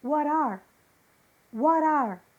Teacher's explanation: Ou seja, a letra T de what ficou com som de R. What are. Isso acontece principalmente no inglês dos Estados Unidos.